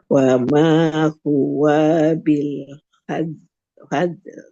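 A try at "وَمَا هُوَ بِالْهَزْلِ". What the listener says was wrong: Nah, ini huwanya masih panjang. Huwa bil. Huwa bil.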